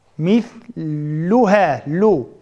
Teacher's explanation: Lamni talaffuz qilgan chog'imizda tilimizning uchiga tishqa tegmay tub tarafga tegish kerak.